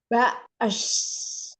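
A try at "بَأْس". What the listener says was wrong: Hati-hati jadi huruf shin ya. Sin, fokus di depan sini aja. Di sini aja. Ba'as. Kayak huruf S biasa. Bukan es ya. Ba'as. Yuk, hamzahnya itu dari tadi ibu kurang syiddah.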